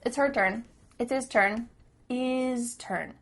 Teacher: The H at the beginning of his and her is cut off.